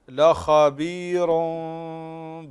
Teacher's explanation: فخم الخاء هنا لخبير بصير